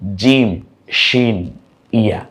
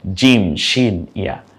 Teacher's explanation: জিহ্বার মধ্যখান তার বরাবর উপরের তালুর সাথে লাগিয়ে জিম, শিন, ইয়া, অর্থাৎ জিহ্বার মধ্যখান থেকেই এই 3টে অক্ষর উচ্চারিত হয়, জিম, শিন, ইয়া।